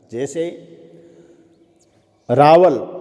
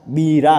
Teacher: फिर एक और विशेषता है ल और ड की। इन दोनों का उच्चारण जो है ब्रजभाषा में ल और ड का र के रूप में होता है।